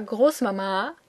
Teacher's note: it is pronounced with the emphasis on the second A